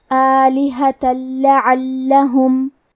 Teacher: کلمت آلہہ میں الف پہ کھڑا زبر ہے تو ہم حمزہ کو ظاہر کریں گے اور مد الف کو بھی ظاہر کریں گے. آخری میں تا پہ تنوین زبر ہے. · ادغام کا معنی ہے حرف کو حرف میں داخل کرنا، تو ہم تنوین کو لام میں ملا کے بغیر غنہ سے لیکن تشدید کے ساتھ یہ حکم کو ادا کریں گے · کلمت لعلہم میں عین کی ادائیگی حلق کے درمیان والے حصے سے ہے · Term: ادغام بغیر غنہ